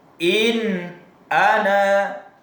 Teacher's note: Bunyi suaranya tetap jelas, tidak samar dan tidak mendengung. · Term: izhar